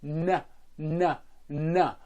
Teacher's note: the N which is with the tip of the tongue